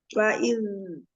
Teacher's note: Pertama jahar lalu dialirkan karena ada sifat rohwa.